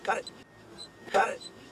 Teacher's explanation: we can hear an American T, which makes the T morph into a soft D. This happens when you have a T sound between two vowel sounds, even if they are in separate words, as it happens here.